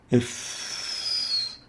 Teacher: to the english f it's pronounced if as in if if it articulates at the lips between the lower lips and the upper teeth if if that's why we call it labiodental between the lips